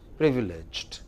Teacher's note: don't make the second syllable longer. It is just the first thing.